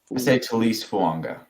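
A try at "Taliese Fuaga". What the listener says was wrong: There's no G in there, though. Did they just shorten it for the NFL?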